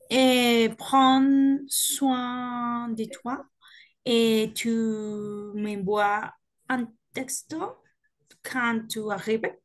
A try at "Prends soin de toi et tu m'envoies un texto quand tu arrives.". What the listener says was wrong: Oui, très bien.